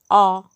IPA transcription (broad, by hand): o^